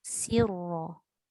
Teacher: Yang tebalnya ra. Sin tak tebal.